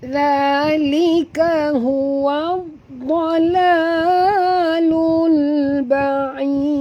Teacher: Kita berhenti dengan mad arid disukun, dan juga kita matikan dal di hujung ni, dia menjadi qalqalah kubra